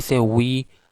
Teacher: our sides of the lips meet with each other, and the articulation is at the velar region. And when we say raw, so in raw, the position of ra is actually alveolar ridge, or just behind the alveolar ridge. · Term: approximant